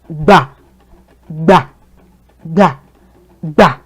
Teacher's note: The point is that your voice gets low when you say it. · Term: do tone